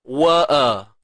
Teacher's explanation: Hamzah pangkal, bawah sekali. Ain, tengah kerongkong.